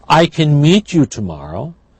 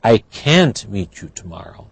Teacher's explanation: negative can't is stressed so the vowel is not reduced